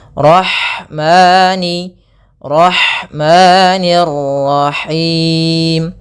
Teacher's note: Kemudian ada lafal ha, alirkan nafasnya pada lafal ha karena di sini ada hukum tajwid berupa ada sifat huruf ha yang itu sifat hamas, mengalirnya nafas.